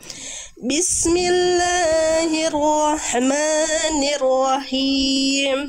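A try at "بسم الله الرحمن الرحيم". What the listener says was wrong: Bunda kepanjangan tadi lebih dari dua harakat diulang Bunda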